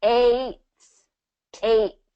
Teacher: And basically what we do is we kind of drop that T on eight. We don't say eight.